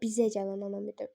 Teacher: Burada deməli məntiqi vurğu bizə sözünün üstündədir.